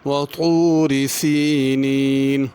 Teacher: وطوری یہاں پہ طا ہے، اس کو پر کرنا ہے، وطوری تا نہیں پڑھنا